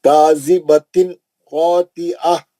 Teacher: تنوین کا اظہار حلقی حرف خا ہے، نہیں غنہ نہیں کرنا، جلدی پڑھنا